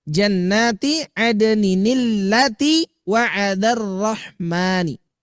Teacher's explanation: pertemuan antara ya tanwin dengan hamzah wasol maka memunculkan nun wikoyah sebagai pengganti tanwin, tetapi tidak menghilangkan tidak menghilangkan asli tanwin itu sendiri.